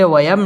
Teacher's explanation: মিম সাকিনে ইজহারে খাস গুন্না ছাড়া পড়তে হবে